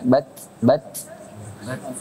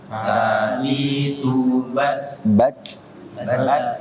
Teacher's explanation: Bat berhenti baru hamasnya keluarin. Bat jangan nggak langsung ya, bukan bat ya. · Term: sifat syiddah